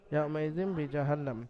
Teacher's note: ইয়াউমাইজিম বিজাহান্নাম, হারাকাত, নুনের উপরে মুসাদ্দাদ আলা হরফ, মুসাদ্দাদ আলা হরফ নুন, তো এখানে নুনকে তাসদীদ আলা হরফ হওয়ার কারণে একালিফ পরিমাণ গুন্না ওয়াজিব হয়েছে, এখানে ওয়াজিব গুন্না একালিফ পরিমাণ নুনকে গুন্না সহ পড়তে হবে।